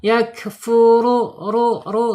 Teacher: Ketika bergetar maka harus ditarik ke belakang, condongkan ke belakang ya. Jadi getarannya tidak lebih dari 2. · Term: takrir, bergetar